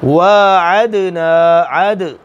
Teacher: دال کے اوپر جزم آ گئی، دال ان حروف میں سے ہے جن پر قلقلہ کریں گے۔ جب ان کے اوپر سکون آ جائے وہ یاد رہنے چاہیے۔